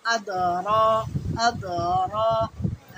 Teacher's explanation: জীবের উল্টো পিঠ, মানে জীব যে আছে এই আগাটা উপরে তালুতে ঠেকাতে হয়